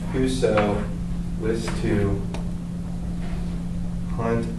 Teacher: are um 10 syllables um it starts stressed or excuse me it starts unstressed stressed unstressed stressed unstressed stressed unstressed stressed